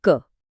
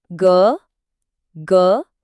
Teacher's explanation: एक गहरी गूंज या वाइब्रेशन साफ पता चलती है। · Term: सघोष